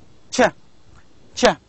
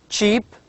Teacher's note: the 30 group which is called as affricates now if you combine a brief stopping of the airstream with an obstructed released which causes some friction